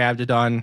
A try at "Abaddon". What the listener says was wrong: You're saying Abdidon. It's not Abdidon. Abaddon. Abaddon. Abaddon. There's 2 Ds next to each other.